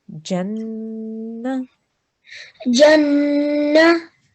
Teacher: we're going to join this jim to the noon gunna, and we're going to hold on that sound for 2 seconds. Okay, so we will say Jannah.